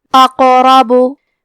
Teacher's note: کلمت اقربو میں حرف القاف پہ جزم ہے تو ہمیں حرف القاف کو قلقلہ سے پڑھنا ہے